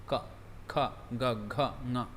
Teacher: ka is the back of the tongue touches the back of the palate